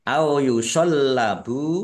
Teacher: Lamnya dibaca dobel ada tasdidnya ditekan biar tampak dobelnya